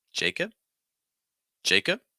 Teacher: so you have an a sound followed by a short I